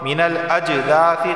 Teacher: قلقلہ ہوگا کیونکہ جیم حروف قلقلہ میں سے ہے، آواز مخرج سے ٹکرائے گی